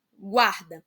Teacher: as duas vogais elas continuam na mesma sílaba o u e o a elas fazem eles fazem parte nessa palavra da mesma sílaba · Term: ditongos